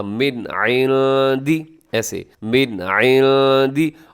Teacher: آپ نے اظہار کرنا ہے، یعنی غنہ نہیں کرنا